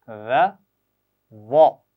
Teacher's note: मोटी और बारीक आवाज़ का फ़र्क है, दोनों बगैर सीटी के पढ़ी जाएंगी। पहली आवाज़ बारीक और दूसरी मोटी है।